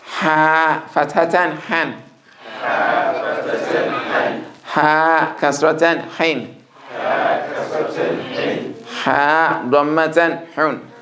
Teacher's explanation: the high-pitched nature of the ha has been maintained from the middle of the throat